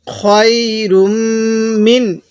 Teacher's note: নুনের মধ্যে স্পষ্ট করে পড়ব, কারণ নুন সাকিনের পরে ইজহারে হরফ থাকলে ওই নুন সাকিনটি স্পষ্ট করে পড়তে হয়। এখানে নুন সাকিনের পরে হামজাটি হলো ইজহারের হরফ।